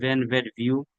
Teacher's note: উপরের দাঁত নিচের ঠোঁট। ভি, উপরের দাঁত নিচের ঠোঁট